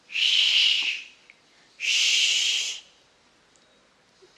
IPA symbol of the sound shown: ʃ